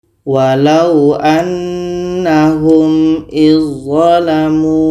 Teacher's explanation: Bermakna ini dha bertemu dha masuk kepada idgham kamil. Maka dha ini kita masukkan secara sempurna kepada dha. Bunyi dhal tidak ada lagi.